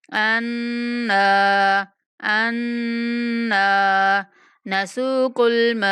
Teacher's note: نون پر غنہ کرتے ہوئے نون کو لمبا کریں گے